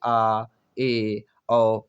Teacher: जिनके उच्चारण में मुख जो है आपका आधा खुलता है। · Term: अर्ध विव्रत